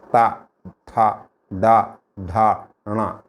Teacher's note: మీకు ఈ నాలుకెళ్ళి పైన మూర్ధన్యాన్ని కొట్టుకుంటుంది